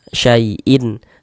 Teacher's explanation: Maka dibaca jelas tidak berdengung. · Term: izhar halqi